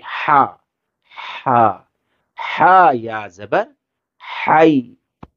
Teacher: ہا جو ہے گلے کے بیچ والے حصے سے اسے ادا کریں گے